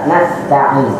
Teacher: Begitu pula ketika mengucap iyyaka na'budu wa iyyaka nasta'in, ketika mengucap sin itu harus terdapat shafir di situ, harus terdapat shafir nas tidak boleh hilang daripada sifat shafir dari sinnya.